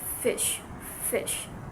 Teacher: there is a narrow flow of air where the airflow is not completely blocked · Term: fricatives